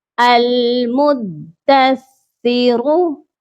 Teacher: اس کا نام بالکل بھی ایسے نہیں لینا، دال کے اوپر بھی تشدید ہے اور فا کے اوپر بھی تشدید ہے، اسی لیے پہلے دال پر سختی کرنی ہے پھر سا پر سختی کرنی ہے